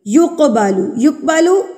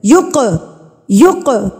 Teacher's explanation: تو اس کو ہم ہلا کے یعنی کہ تھرتراہٹ سے پڑھیں گے۔ یقبالو، یقبالو آواز کو روکنا نہیں ہے، یقبالو نہیں پڑھنا، یقبالو غلط ہے، یق یق قاف کو ہلا کے پڑھیں گے۔ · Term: قلقلہ